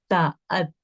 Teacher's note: में हमने ता अत, हमने इसका मखरज तो सीख लिया कि ता जबान की नोक ऊपर वाले तालू से टकरा रही है दांतों के पीछे से